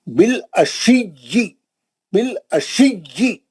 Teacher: बिल अशिय्यि में या को दो बार पढ़ना है